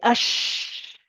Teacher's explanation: It is where the breath spreads out in the mouth. When you say ash, the sound or the breath in the mouth is just going in every direction. Okay, it starts at the makharij and it just spreads towards all the teeth. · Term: tafashi